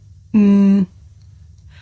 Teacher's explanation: hedge how okay this is a consonant sound it's pronounced um I make this sound by closing my lips and letting the sound come through my nose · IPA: /m/